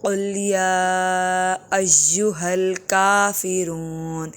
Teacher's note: یہ جو کاف نقطے والا ہے یہ موٹے حروف میں شمار ہوتے ہیں